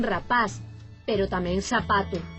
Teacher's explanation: Pero hai unha franxa ao longo da costa occidente de Galicia que non fai diferenza entre o C e o S, e pronuncian todo con S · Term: seseo